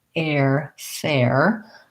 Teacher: fair has the air diphthong and you're right it's going to be longer it's going to have the tense a and then it's going to glide into the air